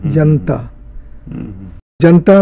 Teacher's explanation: जनता में ऐसा लग रहा है जैसे ना आधा है, तो ये असल में उस आलोप की वजह से है। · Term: श्वा डिलीशन